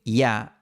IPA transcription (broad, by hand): ja